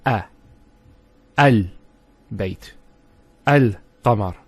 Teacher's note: the Hamza al-Wasl is always pronounced with a Fatha. Not a Kasra and not a Dhamma.